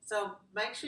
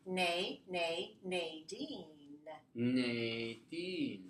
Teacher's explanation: So make sure you go through your nose when you say nay. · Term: nasal